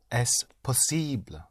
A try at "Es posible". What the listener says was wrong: Yes, but I want to hear the ble. Es Es posible. Es posible.